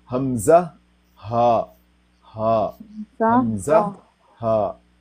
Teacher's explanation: جو حمزہ ہے نا، حمزہ ہا، یہ بالکل حلق کا وہ حصہ جو چھاتی کے ساتھ ملا ہوا ہے نا، وہاں سے تھوڑا منہ کو زیادہ کھول کے ہا ادا ہوتا